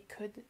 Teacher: Voilà, c'est pas toujours très compatible, et effectivement on ne prononce pas le L dans le modal could